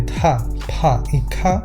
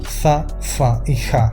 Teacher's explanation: También se habían perdido las aspiraciones